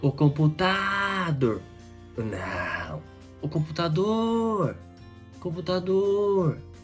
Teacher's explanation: a última sílaba é a mais forte quando a última sílaba fora mais forte o nome será oxítona